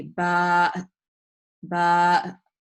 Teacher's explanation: So in this case, if I have a ba alif with the hamza, it's going to be ba, ba. I'm pronouncing the ba long and then ending with the glottal stop.